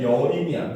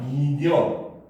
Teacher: 첫 소리 니은이 탈락하는 현상이라서 탈락으로 보면 됩니다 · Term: 두음 법칙